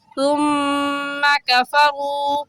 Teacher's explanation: ثم میں سا ہے، سا بھی نرم حروف میں سے ہے، نرمی سے پڑھیں گے، تا کی جگہ سین پڑھنا درست نہیں ہے۔ جو زال کا مخرج ہے وہی سا کا ہے کہ زبان کی نوک دونوں دانتوں کے درمیان میں لگانے سے سا نکلتا ہے۔